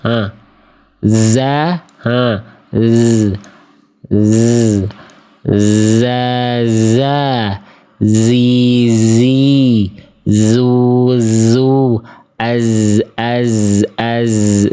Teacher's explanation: kalau zai makhrajnya keluar dari ujung lidah sejajar atau mengarah ke gigi sari bawah atau ke ujung gigi sari bawah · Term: huruf zai